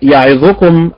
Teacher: اين النبر يعظكم على حركه الياء